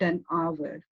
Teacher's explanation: But an आवर में the H of the आवर is silent और जो आपका साउंड है वो आ यानी वाउल साउंड आ रहा है so we are using article an over here.